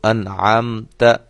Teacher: انعمت جیسے نون کا اظہار ہم نے کیا ہے، ظاہر کر کے پڑھا ہے، نون کی آواز کو ختم کیے بعد فوراً ہی اگلا حرف ہم نے اس کی آواز سٹارٹ کی ہے